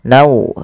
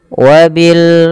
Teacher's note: masukkan tanwinnya kepada huruf waw, nau, kemudian ditahan dengan 2 harokat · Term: idgham bi gunnah